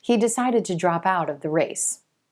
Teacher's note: shift the stress to the word out and we get drop out